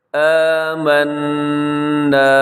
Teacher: یہاں نون مشدد پہ غنہ ہے